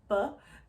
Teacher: the B is stopping by the lips